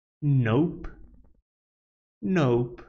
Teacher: it's a voiced alveolar nasal consonant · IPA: /noʊp/